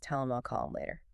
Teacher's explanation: Or when a word ends in a consonant and the next word starts with an H, like tell him. The H sound is often weak anyway, and it just disappears.